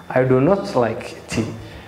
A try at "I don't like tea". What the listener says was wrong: But here it's one word, you see? So say don't. I don't like tea. tea.